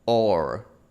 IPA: oɹ